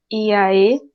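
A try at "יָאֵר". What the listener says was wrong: Iaer, tem um somzinho de R fraco. Iaer.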